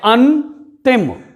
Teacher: न पूरी तरह से स्वतंत्रता पूर्वक अ और त के मध्य में उच्चरित हो रहा है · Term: संपृक्त ध्वनि